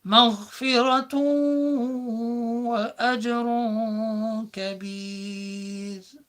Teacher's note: And on that word مغفرة, we're dealing with double dhamma, 2 pesh, which is called a tanween, because you make an end sound, مغفرة, but because a waw comes immediately after, you see it going straight into the waw and idgham being applied. You miss out the nun.